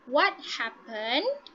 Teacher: So meaning at the end of the sentence, your pitch is going to be falling. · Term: falling intonation